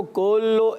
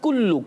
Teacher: کاف کی پیش جو ہے وہ صحیح طریقے سے معروف ادا کرنی ہے